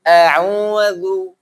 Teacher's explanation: Za-nya lu itu tidak mengalir ya. Tidak mengalir nafasnya, tapi mengalir suara. Zu itu mengalir suara, bukan nafas